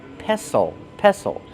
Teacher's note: The T is silent. Don't pronounce the T.